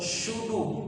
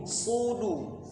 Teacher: Lidahnya jangan ditempelkan yang bagian tengahnya, jangan fi syudu, bukan syudu, sudu. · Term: huruf shad